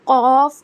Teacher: اور قوف موٹا پڑھا جاتا ہے